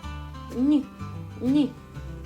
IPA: н’